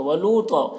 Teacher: لو میں واو مدہ ہے، ایک الف کے برابر کھینچیں گے۔ تو کو پر پڑھیں گے حروف مستعلیہ میں سے، اور یہاں پر وقف کی صورت میں ایک زبر کے ساتھ الف پڑھا جائے گا، اس طرح سے۔